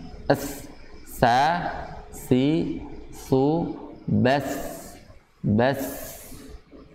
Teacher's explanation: Itu ujung lidah menyentuh bagian ujung gigi seri atas. Ya. Ujung lidah bertemu ujung gigi seri atas.